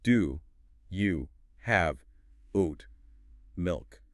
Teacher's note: Every word gets equal weight. Every syllable is sharp.